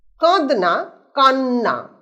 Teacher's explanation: দ যে আছে ধ্বনি সেটা পরিবর্তিত হচ্ছে নতে, দন্ত নতে। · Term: সমীভবন